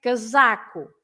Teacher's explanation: you have to stress the middle one because it's the one before the last.